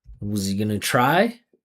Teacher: You see how the pitch goes up at the end because it's yes or no.